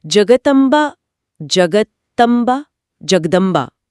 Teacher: जब इसे तेजी से बोला जाता है तो मुंह से त की जगह अपने आप द निकल रहा है।